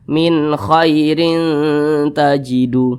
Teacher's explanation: Perhatikan di samping huruf kha termasuk kepada huruf izhar halqi. Maka nun sukun berjumpa dengan huruf kha hukumnya izhar halqi. Maka dibaca jelas, tidak berdengung.